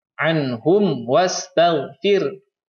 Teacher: Nah, mim mati bertemu dengan huruf waw. Ya, mim matinya dibacanya izhar syafawi. Dibacanya jelas.